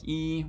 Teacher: useful when you're producing a vowel like e which again is a high front vowel in the palatal sort of place of articulation